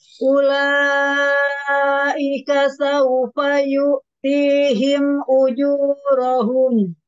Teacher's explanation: Di kata ula, di situ ada mad wajib. Panjang 4 atau 5 harokat.